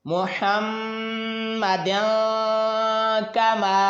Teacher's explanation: تنوین کے بعد کاف حروف اخفا کا ہے، یہاں پر ہم گنہ کریں گے، ناک میں آواز لے جا کر پڑھیں گے تو 1 الف کے برابر لمبائی بھی ہوگی۔